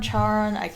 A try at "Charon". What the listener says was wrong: It's not Charn. I know it's not pronounced ch. It's sh.